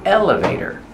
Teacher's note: put the stress on the first syllable elevator and the t is pronounced as a fast D elevator